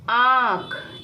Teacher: ध्वनि नाक और मुंह दोनों से निकल रही इसलिए चंद्र बिंदी का प्रयोग यानी कि अनुनासिक का प्रयोग होगा